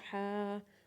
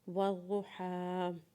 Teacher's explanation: حا کے اوپر جب کھڑا زبر پڑھیں گے تو حا کو ایک الف کے برابر کھینچیں گے